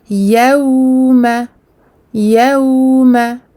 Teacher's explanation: يوم, on efface ici à un mad al-lin, donc un waw sakin précédé d'une fatha, le mad de la douceur. Donc ici on passe du ya au waw de façon douce, fluide, sans bloquer le son.